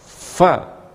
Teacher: Kemudian di huruf-huruf asyafatan, yaitu huruf fa, gigi seri mengenai perut bibir bawah